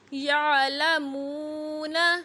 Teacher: میم پیش واو ساکن مو حروف مدہ ہے، ایک الف کی مقدار تک لمبا ہوگا